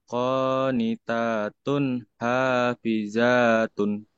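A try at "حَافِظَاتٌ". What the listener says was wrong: Kenapa hafizah? Hafizo bunyi o ini mah.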